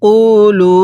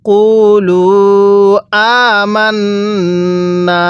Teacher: এই লামের মধ্যে 3 আলিফ টান দিব আর কফের মধ্যে 1 আলিফ টান দিব, কারণ এখানে মদের হরফের উপর চিকন চিহ্ন আর এখানে মদের হরফের উপর চিকন চিহ্নটা না।